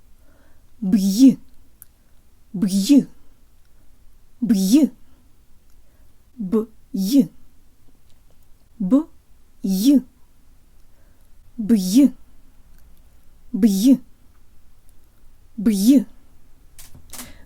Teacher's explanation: air pocket in my mouth created by the release of the b that gets immediately forced out by my tongue going for the y sound, and there's a lot more pressure in my mouth for the y than I'm used to in English.